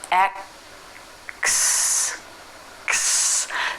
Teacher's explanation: the sound now rather than pulling down the tongue by itself rather than making that full k sound you instead go right into the s